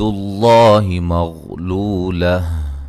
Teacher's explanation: لفظ اللہ کو موٹا ادا کریں گے، اس سے پہلے حرف پر پیش ہے۔